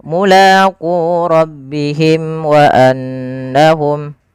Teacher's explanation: Syafawi berarti dia berkenaan dengan berkenaan dengan bibir kita. Maka karena makhraj daripada huruf mim di bibir, maka suara mimnya di sini harus dijelaskan. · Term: izhar syafawi